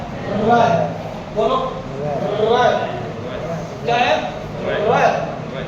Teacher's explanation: जब भी इस व्यंजन का उच्चारण करेंगे तो हमारी जीभ पे कंपन पैदा हो जाएगा, जीभ थर्राने लग जाएगी, थर थर कांपेगी जीभ। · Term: लुंठित